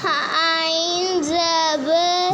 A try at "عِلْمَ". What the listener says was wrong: زبر نہیں ہے. عین زیر لام.